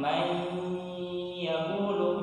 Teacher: Idgham bi gunnah itu adalah nun mati atau tanwin bertemu dengan iya nun mim waw ya, atau disingkat dengan yanmu ya. Jadi kita tahan may yaqulu ya, sekitar 3 harokat mungkin · nun mati bertemu dengan iya, sama hukumnya idgham bi gunnah ya. Idgham bi gunnah itu adalah nun mati atau tanwin bertemu dengan iya nun mim waw ya, atau disingkat dengan yanmu ya.